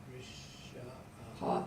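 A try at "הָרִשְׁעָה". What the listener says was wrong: No, that's a silent spot. I mean, har, har, sha'a.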